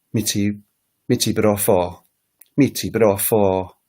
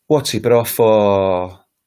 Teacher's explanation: So the intonation goes down in asking a question.